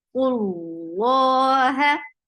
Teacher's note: For dhamma, circle your lips, attach with lafz jalala. Lafz jalala will be heavy because you found dhamma before Allah subhanahu wa ta'ala's name, and it is by default, it is long.